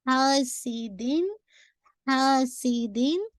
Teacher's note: ہا کو 2 کاؤنٹ کیونکہ الف مت دیا ہے